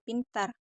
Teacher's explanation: P pada posisi awal seperti pada kata pintar diucapkan secara meletup atau polosif.